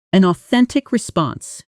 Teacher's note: the N at the end of an glides directly into the ah at the start of authentic. So it almost sounds like one connected chunk.